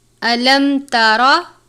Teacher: میم ساکن کے بعد تا ہے یعنی اظہار شفوی کا قاعدہ لگتا ہے، میم ساکن پر غنہ نہیں کریں گے